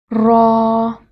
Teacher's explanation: زبان کو ہلکی سی لرزش کے ساتھ ادا کریں